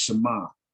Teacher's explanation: This is mostly what the Israelis, the way the Israelis speak, and it would be pronounced Shema, that ayin would be silent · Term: Sephardic dialect